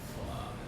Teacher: The air will rub against the teeth and the lips. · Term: dental and labial